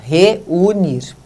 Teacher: o som do E e o som do U, eles são pronunciados na sua íntegra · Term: hiato